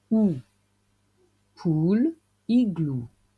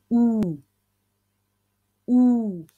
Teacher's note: Le son OU qui s'écrit OU ou 2 O. Les lèvres arrondies et en avant, la langue relevée.